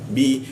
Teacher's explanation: Lalu berikutnya wala wa la di bawah hidung dia la masuk ke bi bibir bertemu bibir